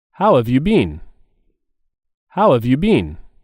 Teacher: there's a stress on how